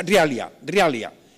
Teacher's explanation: Entonces, esto es rivalia. Y rivalia tiene la bilabial que desaparece, esa V va a desaparecer, desaparece por ser intervocálica